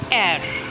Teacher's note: In fact, the last R is also silent in British pronunciation, but not in American pronunciation.